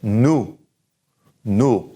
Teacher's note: The OU sound is oo, and no pronunciation of the S